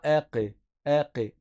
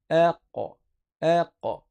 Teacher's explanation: Ça donne aq. Et là, la lettre, elle est grave. Le qaf est grave.